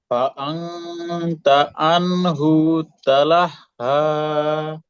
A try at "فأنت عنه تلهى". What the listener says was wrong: মাশাআল্লাহ এই তো সুন্দর হয়েছে আন হুটা একটু তাড়াতাড়ি করতে হবে আন হু একটু টান হয়ে গেছে তাই না